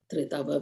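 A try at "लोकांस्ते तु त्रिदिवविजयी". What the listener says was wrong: The second time, you said tridava, it's tridiva.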